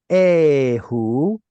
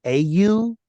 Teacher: that very soft letter hey got swallowed up, which becomes something more like au. And then when the vav took on a V sound, that's when this suffix all of a sudden magically became av, with the yod no longer pronounced.